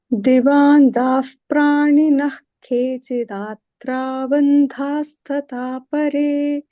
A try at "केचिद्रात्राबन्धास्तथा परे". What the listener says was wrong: Not datra, dratra, not datra. Not dratra, not datra. Kechidratra.